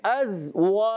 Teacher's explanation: वाव की अदायगी होंठों की गोलाई से ही होता है। अगर कोई बगैर होंठ गोल किए वाव की अदायगी करता है, ये गलत है, क्योंकि वाव अदाई होंठों की गोलाई से होता है।